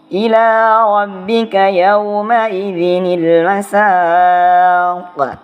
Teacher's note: Nah, di sini karena dia berada di akhir kalimat, maka qalqalahnya adalah qalqalah kubro. Jadi dibacanya itu pantulannya agak lebih keras gitu.